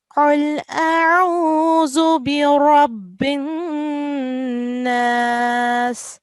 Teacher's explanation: it's a qalqala, which means you have to do a strong joining when you join with ra